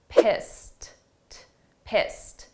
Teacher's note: the sound of that ED is a very soft T, pissed, pissed.